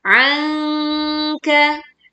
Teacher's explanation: membaca nun sukun bertemu kaf dengan menyamarkan bunyi nun sukunnya. Dan ini termasuk bacaan dengung dan tidak dibaca tergesa-gesa.